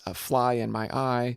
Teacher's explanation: anapest which is two unstressed syllables followed by a stress syllable